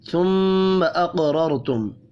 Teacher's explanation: قاف ساکن پر قلقلہ کریں گے · میم مشدد پر غنہ کریں گے. قاف را اور پھر دوسری را، تینوں حروف پر پڑھے جائیں گے.